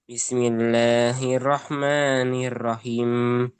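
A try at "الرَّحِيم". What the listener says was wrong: Rohim. Jangan langsung putus. Nah, tapi rojim, rohim.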